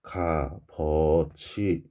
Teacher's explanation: 시옷은 없어지고 이 비읍이 뒤로 넘어가야 되겠죠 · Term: 자음군 단순화